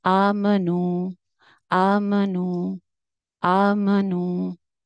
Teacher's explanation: तो ये आ एंड नू, इन दोनों की लेंथ एक जितनी है। सिर्फ सेंटर में जो मीम आ रहा है उसके ऊपर जबर है, उसकी लेंथ इन दोनों के मुकाबले में आधी है · आ एंड नू, इन दोनों की लेंथ सेम होगी, क्योंकि वो खड़ी जबर है, अलिफ मद्दा के कायम मुकाम थी, और नू वाव मद्दा है। तो ये आ एंड नू, इन दोनों की लेंथ एक जितनी है।